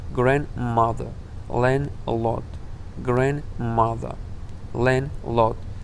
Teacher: агар ҳарфи d дар байни калимаҳои мураккаб пас аз ҳамсадои n ояд, хонда намешавад